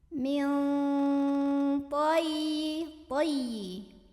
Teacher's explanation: nun sukun dibunyikan samar-samar menuju huruf ta sambil ada dengungannya. Karena huruf ta ini dekat atau akrab makhrajnya dari nun, maka bunyi samarnya masih jauh lebih besar dibandingkan dengan dengungannya.